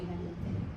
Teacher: प बोलताना महाप्राण आहे जास्त हवा बाहेर पडते